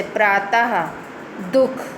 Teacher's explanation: इनका उच्चारण आधे हा के समान होता है. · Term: विसर्ग